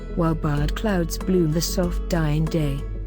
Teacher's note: There is also an emphasis on long vowels which control the flow of the poem, giving it a slow measured pace